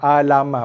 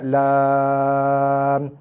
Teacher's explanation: Misai pada huruf potong wajib dibaca dengan 6 harakat.